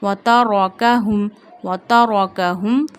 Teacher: Kaf in a thin voice, and ha we read from the bottom of our throat. Ha, mim, zama, hum.